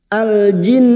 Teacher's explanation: Alif lam qamariyah atau idhar qamariyah. Al jin, nun yang bertasdid gunnah musyaddada, kita dengungkan selama 3 harakat